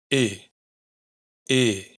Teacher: ¿Y cómo suena una I abierta? Pues es un sonido que tiende un poco hacia E, pero sigue siendo una I.